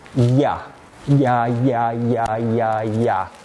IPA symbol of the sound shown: j